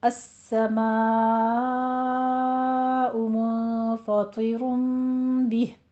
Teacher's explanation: السماء میں مد متصل واجب، اس کو 5 کاؤنٹ کرنا ہے